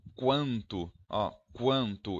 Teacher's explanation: eu ouço um leve som de U, então esse U também vai ser representado por W.